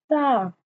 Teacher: زبان کی نوک کو اوپر کے سامنے والے جو دو دانت ہیں ان کے اندرونی کناروں سے لگانا ہوتا ہے